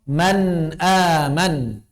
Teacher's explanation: antara nun di tengah dengan nun di belakang harus sama karena sama-sama izhar. Man aman enggak bisa salah satunya lebih panjang.